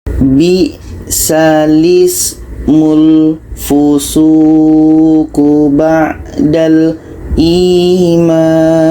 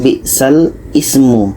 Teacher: Hamzah ini yang asalnya berbaris di bawah kita pindahkan kepada huruf lam. Jadi sekarang yang berbaris di bawah ini bukan hamzah lagi, tetapi adalah lam.